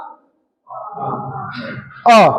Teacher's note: ये जो अ है इसका उच्चारण स्थान कंठ है